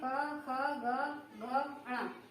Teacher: क वाली लाइन, क वाला वर्ग कंठ से बोला जाता है, इसलिए इसे कंठ वर्ग कहेंगे। क, ख, ग, घ, ण ये कंठ वर्ण कहलाएंगे।